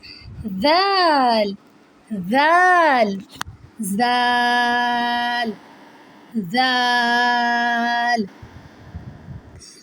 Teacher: Zal comes when the tip of the tongue touches the edge of the upper two front teeth.